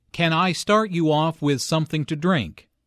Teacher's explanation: since this is a yes no question the intonation rises at the end